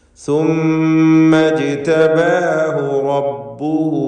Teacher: ഇജ്തബാഹു ജീമിൻ്റെ സുക്കൂൻ ഖൽഖല സുഗ്റ നൽകി ശബ്ദം ഹറക്കത്ത് പോലെ ചലിപ്പിക്കുക · റബ്ബുഹു റാഇന് തഫ്ഖീം കൊടുക്കണം. റബ്ബുഹു എന്നതിലെ ഹാ ഉദ്ദമീറിന് മദ്ദുസിലത്തി സുഗ്റ എന്ന 2 ഹറക്കത്തിൻ്റെ അളവിൽ മാത്രമുള്ള ദീർഘം നൽകണം